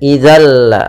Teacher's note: Idzal, langsung ke lam, suara nunnya tidak lagi terdengar, langsung ke la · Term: idgham kamil